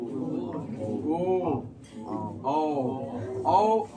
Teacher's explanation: आपका ओठ जो है एकदम गोल बन जाएगा